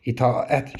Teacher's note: tələffüz zamanı a və ə arasında, yəni müxtəlif cinsli bu sait qoşalığı arasında y səsi artırılmır. İtaət şəklində tələffüz etməliyik.